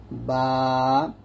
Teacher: আর 15 নং মাখরাজ হলো দুই ঠোঁটের ভেজা জায়গা হতে উচ্চারিত হয় বা। দুই ঠোঁটের ভেজা জায়গা থেকে আমরা বা উচ্চারণ করব স্বাভাবিকভাবে পাতলা করে বা